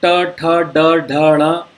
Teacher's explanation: उसी तरह से ट, जब हम ट वर्ग का उच्चारण करते हैं तो ट वर्ग में हम हल्का सा जीभ को कर्ल करते हैं, ट्विस्ट करते हैं, और ऊपर की तरफ, जो तालु के ऊपर की तरफ, वहाँ पे टच करते हैं।